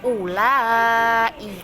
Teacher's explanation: Mat far'i, hukum bacaan mat yang dibaca panjangnya 2,5 alif.